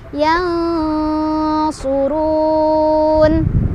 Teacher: ketika berhenti, si nunnya jadi sukun dan bacaannya jadi lebih panjang lagi. Jadi boleh lebih panjang dari 2, boleh 2, boleh 4, boleh 6. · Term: mad aridli sukun